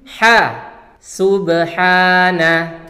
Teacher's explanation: pakai huruf ha kecil yang keluar dari tengah tenggorokan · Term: huruf H kecil